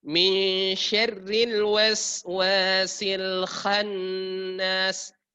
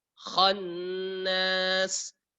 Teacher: yang paling sering kesalahan adalah kha-nya ditarik ke huruf nun. Sehingga dia terbuka tidak tebal pada huruf kha. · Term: tafkhim